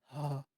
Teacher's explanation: स्वर यंत्र यानी लिरिक्स बॉक्स, आपका जो गले के पास वाला क्षेत्र होता है। आप जब हा बोलोगे तो आप देखना आपके गले के पास थोड़ा सा कंपन होता है। जब आप हा बोलोगे हा तो आपको गले में क्या होगा कंपन दिखाई देगा।